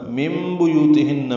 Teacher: نون ساکن کے بعد با آنے کی وجہ سے اقلاب ہے، نون کی جگہ میم پڑھیں گے. من بیوتہن یو و مدہ ہے، ہن میں نون مشدد پہ غنہ ہے.